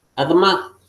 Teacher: casi ni suena la Hataf Pataj. Esta es una compuesta reducida.